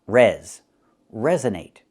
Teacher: We have two stresses with this word resonate. The first stress, the primary stress is the first syllable.